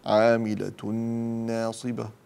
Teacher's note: عاملة ناصبة تنوين بعده نون فأنا أدغم